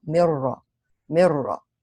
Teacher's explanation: You merge the nun into the ra completely. You don't keep the gun. You don't retain any part of the nun, even its gunna. You don't retain the gunna. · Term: idgham bi ghayri gunna